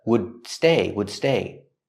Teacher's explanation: It's a stop D. Stop the air. Don't release the D.